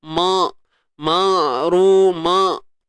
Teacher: Untuk huruf ain tengah kerongkong kita.